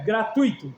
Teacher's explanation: no gratuito, o i ele é muito breve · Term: semivogal